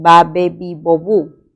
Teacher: Y en la 4 tenemos ba, be, bi, bo, bu. Este sonido es un sonido oclusivo, bilabial y sonoro